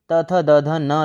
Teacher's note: ये दंत से उच्चारित होते हैं।